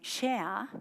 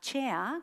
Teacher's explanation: Entonces, para eso, si yo quiero enseñarle la diferencia entre una fricativa como en shea y frente a chea, que es una africada, por mucho que yo le diga pues que en shea su lengua no está tocando el paladar, no está tocando el cielo de la boca, pero en chea sí